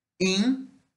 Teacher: E é anterior e fechado, e é oral. In é nasal, fechado e anterior